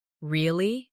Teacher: With a rising tone to show surprise.